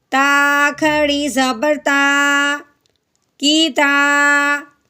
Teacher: تا کے اوپر کھڑی زبر لگی ہوئی ہے، اسے ایک الف کے برابر لمبا کریں گے